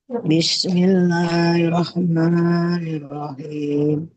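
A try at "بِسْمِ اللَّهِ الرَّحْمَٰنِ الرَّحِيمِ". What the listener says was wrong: Di huruf rohnya itu ada tasydidnya ya. Bismillahirrahmanirrahim. Jangan lupa ada penekanan.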